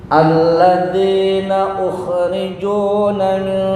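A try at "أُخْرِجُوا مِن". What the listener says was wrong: Nah, enggak ada na. Ukhriju min. Jangan ditambah na, enggak ada nun di sini.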